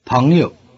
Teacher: the first syllable has the rising tone and the second syllable is in the neutral tone